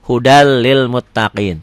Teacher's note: N kalau dilatenkan jadi hudal, jadi double L. Hudal lil muttaqin tanpa ditahan. Itu idgham bila gunnah.